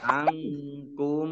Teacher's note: nun sukun bertemu dengan huruf kaf, bacaan ikhfa dibaca samar-samar